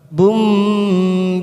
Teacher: tanwin pada huruf ba di sini namanya bacaan iklab kita tekan tiga ketuk